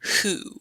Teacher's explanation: it's kind of like a silent W, because you're really just pronouncing the H and a oo sound